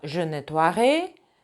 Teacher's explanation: Что касается глаголов ouailler и ouiller, то в будущем времени там будет сочетание oi, которое будет читаться как oua.